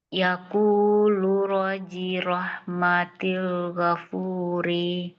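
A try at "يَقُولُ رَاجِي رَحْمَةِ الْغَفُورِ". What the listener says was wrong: Oke, rohnya panjang roji rahmatin.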